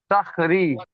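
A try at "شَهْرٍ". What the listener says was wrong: শাহরি হবে না, শাহর। শিন হা র জবর শাহর।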